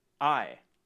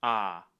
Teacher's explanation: in standard English the vowel in my and ride is a diphthong basically meaning that the vowel shifts from one to another within a single syllable uh I in aave it's just one continuous vowel sound ah